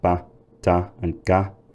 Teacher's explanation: I've not aspirated plosive consonants like ba, da, and ga, because in traditional dialects, the further north you go in the UK, the less aspirated they are. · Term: unaspirated